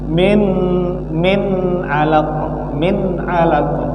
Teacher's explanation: Kalau izhar dia jelas. Apanya jelas? Huruf nun. Nun itu dibaca jelas.